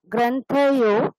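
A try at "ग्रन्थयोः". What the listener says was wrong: গ্রন্থয়োহ, বিসর্গর উচ্চারণটা হয়নি,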